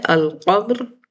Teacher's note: حروف قمری میں ہم لام کو واضح پڑھتے ہیں، یعنی ظاہر کر کے پڑھتے ہیں، جزم دے کے پڑھتے ہیں